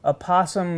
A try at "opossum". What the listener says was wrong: I don't think you need to do the O. She says in one of her clips that you don't.